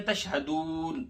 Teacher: نون کو وقف کی وجہ سے ساکن کیا جا رہا ہے، یہاں مد عارض وقفی ہے، اس کی مقدار 2 یا 2.5 4 الف کے بقدر ہے.